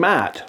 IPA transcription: mæ:t